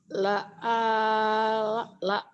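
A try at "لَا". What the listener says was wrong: lanya tapi panjang lanya panjang Bu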